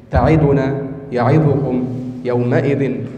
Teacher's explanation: هذا اختلاس ليس بإتمام الحركة، يعني أن الحركة ليست تامة